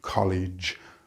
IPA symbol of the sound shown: dʒ